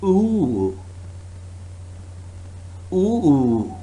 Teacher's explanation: make and hold the sound use a rising than falling you use a rising then falling intonation as if you have heard something surprising